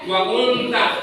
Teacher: seolah-olah di situ huruf nun tidak ada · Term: ikhfa hakiki